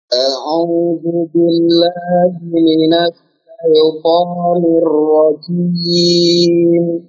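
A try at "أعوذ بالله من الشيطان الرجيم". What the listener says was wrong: Ulangi lagi tadi untuk ainnya jangan masuk hidung ya. Jangan a'u. Antum nanti latih dengan cara menutup hidung.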